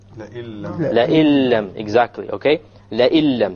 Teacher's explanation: we drop out the noon and we pronounce it with the hamza immediately merges with the lam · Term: idgham without ghunnah